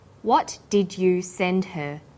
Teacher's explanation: Send is the strong form and her is weak. Because her is not stressed, we drop the initial h sound.